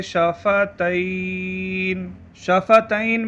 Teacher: شفتین میں یا حرف لین ہے، وقف کی وجہ سے نون پر عارضی سکون ہے تو یہاں مد لین عارض ہوگا۔ مد عارض اور مد لین عارض کو 1، 2 یا 3 الف یعنی 2، 4 یا 6 حرکات کی مقدار تک کھینچ کر پڑھیں۔